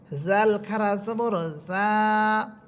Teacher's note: এরপরে হরফ জাল, জিহ্বার আগা সামনের উপরে 2 দাঁতের আগার সাথে লাগবে